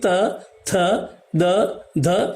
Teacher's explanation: ये दांत के पास में यानी ऊपर के मसूड़े से स्पर्श होकर के निकलते हैं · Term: दंत्य